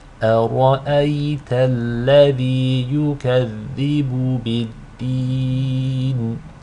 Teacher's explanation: It's a mud that results due to stopping at the end of the ayah. You can elongate it 2, 4, or 6 counts. For the purpose of this demonstration, we will elongate it with 4 counts. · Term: mud al-'adi lis-sukun